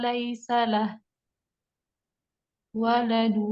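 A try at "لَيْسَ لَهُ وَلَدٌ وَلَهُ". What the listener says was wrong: Ini bu- bukan ini tandanya mat tabi'i ya. Tanda bacaan mat jadi dibaca panjang bukan waqaf. Salahu waladu walahu.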